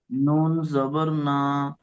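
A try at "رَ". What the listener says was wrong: এত এরকম করার দরকার নেই, আর মুখ গোল করবো না আমরা ইনশাল্লাহ। র, র, র জবর র, র জবর র। কোন রকম ভাই আমাদের মুখ কি গোলেছে? র, র, এরম হচ্ছে কি? র, র।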